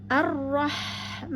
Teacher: Kemudian kita naberkan pada ro yang bertasdid, ar-roh, ya. Kemudian dilanjutkan dengan ha tengah tenggorokan yang bersukun, maka alirkan ha pada haknya